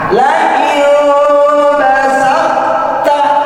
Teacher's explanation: Karena dia termasuk mutajanisain, qalqalahnya hilang langsung masuk ke huruf ta.